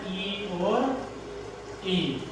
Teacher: तालव्य, यानी कि जिनका उच्चारण स्थान तालु होता है, तालु से जिनका उच्चारण किया जाता है